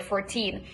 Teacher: don't make a flap in the word 14